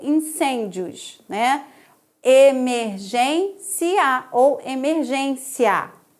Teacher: esses ditongos crescentes, quando estão colocados no final da paroxítona, podem ser inclusive interpretados como uma proparoxítona